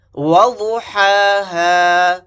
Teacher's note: یہاں پر ضاد کو موٹا یعنی پر پڑھیں گے، یہاں پر بڑا ہا کو حلق سے ادا کریں گے اور یہاں پر چھوٹے ہا کو سینے سے ادا کریں گے بھاری آواز میں۔